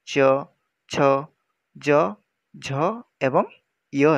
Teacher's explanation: एही ध्वनिर उच्चारण रे अग्रजिह्वा ऊपर को उठी कोमल तालुरु अग्र भाग सहित मिलित हुए। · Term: तालव्य ध्वनि